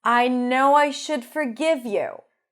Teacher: Drop the L, no L. And forgive, lax I. Not forgive.